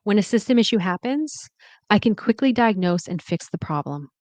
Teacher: at the end of the sentence, let the intonation fall